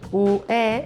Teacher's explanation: UE és el diftong i és un diftong creixent. Primer la U, dèbil, i després la E, forta.